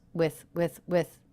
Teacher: the word with is not reduced but it's very flat in pitch because it is unstressed with with with it's also quite fast with milk with with